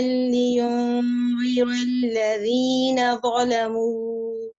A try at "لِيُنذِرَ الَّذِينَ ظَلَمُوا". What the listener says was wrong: Lift up your ra a little bit. لينذر الذين ظلموا.